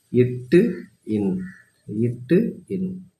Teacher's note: நாவின் நுனி அன்னத்தின் நுனியை பொருந்துவதால் பிறக்கும் எழுத்துக்கள்